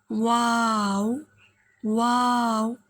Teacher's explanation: वा दोनों होठों की गोलाई से दोनों होठों को गोल करके